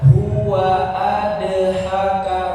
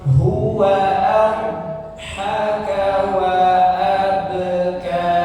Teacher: Abha jangan dipantulkan menjadi dal. Jangan dibaca huwa adhaka, bukan adhaka tapi abhaka. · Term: Huruf Dhad